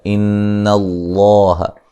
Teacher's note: نون مشدد پہ غنہ ضروری ہے ، لفظ اللہ کو موٹا ادا کریں گے، اس سے پہلے